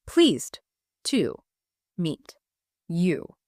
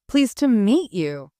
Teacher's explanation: In this phrase, the word to isn't pronounced to. It reduces to ta. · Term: schwa